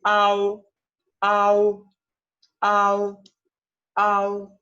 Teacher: la O es un sonido más bien vago, que se va como difuminando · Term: final AO